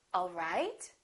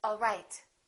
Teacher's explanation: Now, if this is a question, I would say it differently. The word right, the pitch would go up. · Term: rising intonation